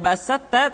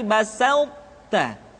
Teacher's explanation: sifat itbaq yang dimiliki oleh huruf th masih tetap ada sehingga ketika mengucapkan e th bertemu dengan ta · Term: idghamnya huruf tho